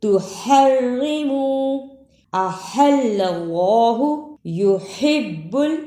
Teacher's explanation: ہا کو ادا کرنے کا طریقہ حلق سے آواز کو رگڑ کر نکالنا ہے